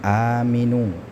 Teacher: a-nya dipanjangkan ketika hamzah bertemu dengan alif ya. Ketika hamzah bertemu dengan alif maka dia dibaca dengan mad badal panjangnya dua harakat ya.